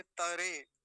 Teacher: चीज और इसमें मन वं कई बार त्रे कह देते े त्रे भी नहीं होना चाहिए तरे क्योंकि तक पूरा है